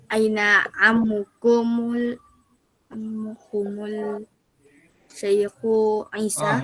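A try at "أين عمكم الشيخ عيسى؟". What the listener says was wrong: Ini alif syamsiyah. Alif lam syamsiyah.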